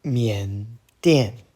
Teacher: And that was third tone, fourth tone